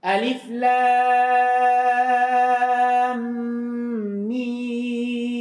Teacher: Al-awwal ay wajhul awwal, yang pertama al-maddu bimiqdar 6 harakat. Mimnya dipanjangkan 6 harakat. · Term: Mim panjang 6